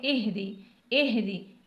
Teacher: گول ہا کو ہم سینے کی جانب سے ادا کریں گے